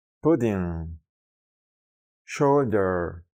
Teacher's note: su sonido se reproduce como una u corta y relajada de la lengua española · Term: short you